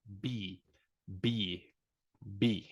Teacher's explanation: It's going to be pretty similar to P, but the sound, the air, is not that explosive as it is in the letter P. B, B, B.